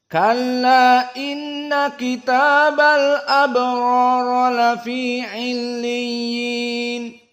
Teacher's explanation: dibaca dalam keadaan tanpa idgham dan tanpa al-imalah namun ala taksir